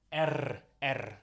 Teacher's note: So in Russian language you pronounce this as R, R. So it's a rolling R. So it's R letter.